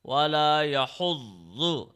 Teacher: Press the ZA. There is shadda on it. Press it for 1 second.